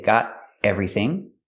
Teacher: Let's talk about the T in got. You can make a stop T and say got everything.